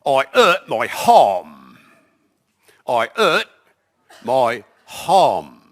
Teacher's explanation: Drops the H and puts one in.